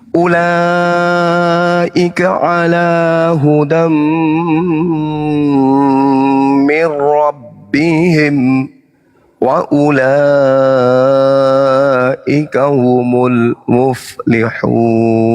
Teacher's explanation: Tanwin bertemu dengan mim, idgham mim.